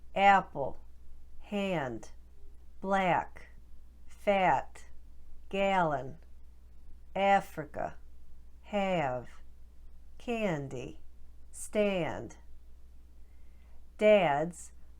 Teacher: do you hear how there's just a little bit of a movement in the sound instead of a pure staccato eh